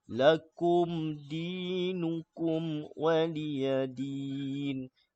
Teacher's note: mim bertemu huruf dal kena jelas kemudian mim bertemu waw pun kena jelas hukum di sini kita panggil hukum syafawi mim bertemu huruf dal ya, izhar syafawi ni mim bertemu waw ni izhar syafawi tak boleh kita baca lakum dinukum tak boleh sebab hukumnya izhar izhar syafawi.